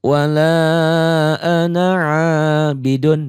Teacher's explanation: Wala ana a-nya mad tabi'i, abidun dunnya ini ain yang berbaris fathah dipanjangkan dengan alif, ini mad tabi'i